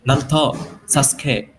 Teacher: itu mereka tuh U-nya suka hilang